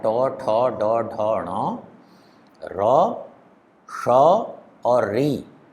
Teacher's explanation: ट, ठ, ड, ढ, ण, र, श और री, इनका उच्चारण स्थान मूर्धा है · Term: मूर्धन्य